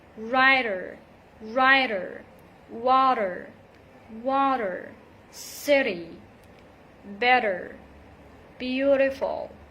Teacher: the flap t sound it sounds more like a quick d we pronounce it when it comes between two vowel sounds